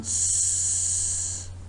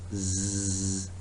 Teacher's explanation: I gave a demonstration on this, that put your finger or your thumb on the Adam's apple and produce the sound s. There is no vibration at all. But when you say zzz, you can feel the vibration.